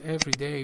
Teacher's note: which is an adjective, and the stress is on the first syllable, and it comes before nouns